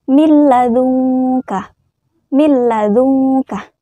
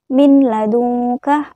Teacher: memasukkan huruf nun ke dalam huruf lam dengan tidak berdengung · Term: idgam bilagunnah